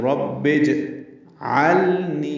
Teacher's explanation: یہ سمجھانے کے لیے پڑھنا ہم نے اس کو کیسے، رب با کو جیم سے ملانا ہے، تو جیم ساکن ہے، اس پہ قلقلہ ہوتا ہے، جیم کو ہلا کر ادا کرنا ہے